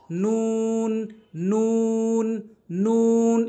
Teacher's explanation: জিহ্বার আগাটা উপরে তালুর সঙ্গে লাগাবো